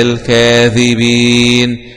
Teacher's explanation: الذال مخرجها طرف اللسان مع أطراف الثنايا العليا، الياء فيها مد عارض للسكون في حالة الوقف مد طبيعي في حالة الوصل.